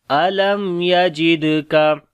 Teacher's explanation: علم یا جد کا دال کے اوپر قلقلہ کریں گے، کمزور قلقلہ ہوگا